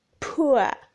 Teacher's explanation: the lips are rounded at the beginning then neutral as the glide progresses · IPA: /pʊə/